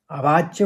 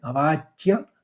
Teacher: व के ऊपर आघात है तो अवाच्य दो च निकलेंगे